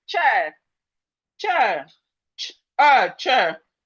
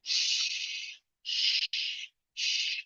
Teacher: the CH is a bit short. It's short and a bit thick, while the SH is long